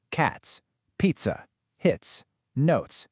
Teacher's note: That sharp, clean hiss at the end of every single one. That's our voiceless tiss sound in action. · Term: voiceless tis sound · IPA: /ts/